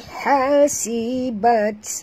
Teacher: bunyikan hamas pada ta yang mati